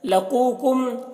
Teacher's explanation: क़ाफ को पुर पढ़ना है और यहाँ पर वाव मद्दा है। कुम के मीम में इजहार शफवी हो रहा है।